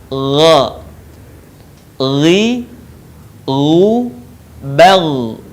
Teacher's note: Huruf gha termasuk salah satu huruf yang harus terdengar menebal suaranya.